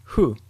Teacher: Moving on to F sounds. It is less of a distinct sound and more of air being pushed out of your lips. It sounds like this: hu.